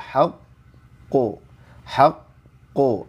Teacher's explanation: Qalqalah huruf q itu tebal